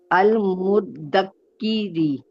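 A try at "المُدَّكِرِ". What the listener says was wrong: काफ के ऊपर शद्दा क्यों डाल रहे हो आप?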